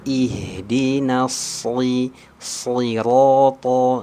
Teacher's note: huruf shad yang kasroh ini sering terbaca huruf sin